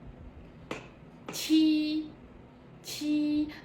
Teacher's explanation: Từ này bật hơi mọi người nhé, bật hơi giúp cô này.